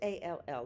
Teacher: did you hear the strong l sound so those double L's there do not sound like a y